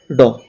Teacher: मूर्धन्य अल्प प्राण घोष व्यंजन वर्ण